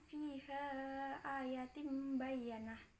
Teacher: iklab, sebab tanwin bertemu huruf ba